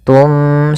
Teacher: Maka di lafal summum bukmun, ini kita tahan suara bacaannya, yaitu maaf, kita balikkan suara nunnya menjadi suara mim, tum, sambil ditahan gunnahnya. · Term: iklab